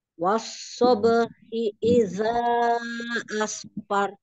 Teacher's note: Hinya satu harokat, jangan diayun